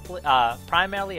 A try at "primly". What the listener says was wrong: Primly. Primly. Like prim and proper. You said primarily, though.